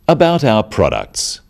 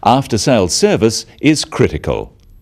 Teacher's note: note the downward intonation at the end of sentences